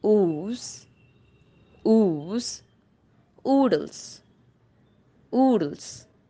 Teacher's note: it is close back rounded vowel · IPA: /uː/